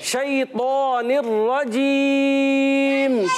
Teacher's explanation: मुंह में आवाज़ फैल कर ये शीन अदा होता है और या साकिन से पहले ज़बर आ गया, ये हो गया या लीन। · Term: तफशी